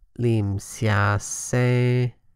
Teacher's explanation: the phrase's pitch initially drops, then is level on a moderately low tone, then level on a mid-tone. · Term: sandhi